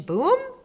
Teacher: the boom with a rising intonation